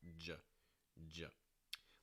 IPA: dʒ